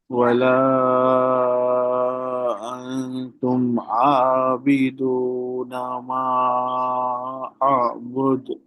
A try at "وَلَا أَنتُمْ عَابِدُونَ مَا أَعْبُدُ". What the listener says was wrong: ہاں، عابدون یہ جو ہے نا تھوڑا اور کلیئر عین نکالیے، عابدون، عابدون. ولا انتم عابدون.